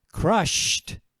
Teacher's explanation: if I say crushed, there's no vibration in my throat.